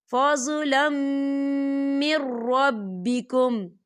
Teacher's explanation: دیکھیے فضلم، لام کے اوپر تنوین ہے اور تنوین کے بعد میم آ رہا ہے اور میم جو ہے حروف یرملون میں سے ہے تو یہاں پر ادغام ہوگا اور ہم اسے غننے کے ساتھ پڑھیں گے